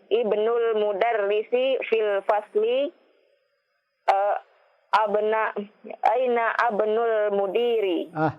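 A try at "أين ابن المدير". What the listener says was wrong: Tadi ibnu di tengah tidak dibaca.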